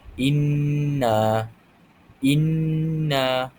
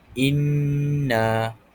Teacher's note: Jadi hamzah huruf alif dan hamzah di bawah baris bawah saktah bertemu dengan nun syiddah. Iaitu kita perlu baca dengan dengung sepanjang dua harakat. Jadi cara bacaan yang betul ialah inna inna. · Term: idgham al-ghunnah